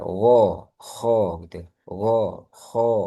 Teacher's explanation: bagian atas G sama K itu sudah mepet sama pangkal lidah. K tenggorokan atas dan dia memiliki kemika memiliki kemiripan dari sisi tebalnya.